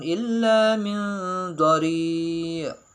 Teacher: huruf lam bertasydid itu harus dibaca dengan kuat atau harus ditekan